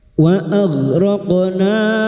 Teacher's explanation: mad jaiz munfasil kita panjangkan empat atau lima harakat